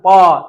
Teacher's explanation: तो ओठ सट रहा है ना दोनों